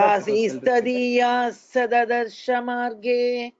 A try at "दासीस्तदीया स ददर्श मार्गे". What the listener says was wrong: यस यस यस. Well recited.